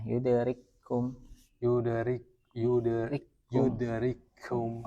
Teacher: Kafnya sempurna. Kaf yang pertama sukun masuk pada kaf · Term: idam yang kamil